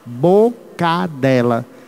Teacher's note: Quando você emenda boca com dela, cadela. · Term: cacofonia